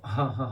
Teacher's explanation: So this is like wow, you have to make a bit longer, and this is again comes from your lips. Ha comes from the bottom of your throat, and that has to be a bit stronger sound. As we laugh ha ha ha like that, the sound comes a bit forcefully.